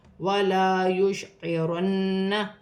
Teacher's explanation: نون مشدد ہے, نون مشدد کو جماؤ کے ساتھ ادا کیا جائے گا, غنہ بھی کیا جائے گا